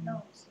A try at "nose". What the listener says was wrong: 그렇지, rose. 오케이, rose처럼 들리는데, 뭐, rose 해도 상관없어요.